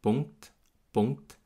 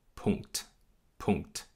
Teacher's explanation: Also nicht Pu, Pu, sondern Pu, Pu, Punkt, Punkt. Und die beiden Plosive, also der erste ganz am Anfang des Wortes P und der zweite ganz am Ende des Wortes T, die werden aspiriert.